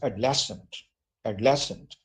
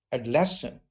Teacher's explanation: When I say adolescent, the first part becomes very weak.